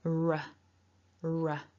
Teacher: Probably out of all of the parts here, the r might be the most problematic for some people. In English, we curl the tongue back a little bit, the tip of the tongue, to make the r,